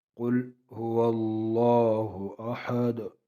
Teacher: قل قاف پر پڑھیں گے، لام کو باریک پڑھیں گے